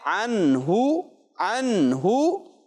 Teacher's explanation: نون ساکن کو ظاہر کر کے پڑھیں گے اور غنہ نہیں کریں گے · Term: اظہار